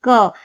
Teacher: क अघोष अल्प प्राण व्यंजन वर्ण है।